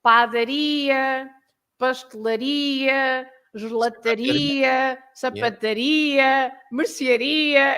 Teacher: The words ending in ia, they are stressed at the end.